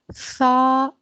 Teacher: زبان آپ کے اوپر اور نیچے کے دانتوں کے درمیان دبتی ہے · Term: مخرج سا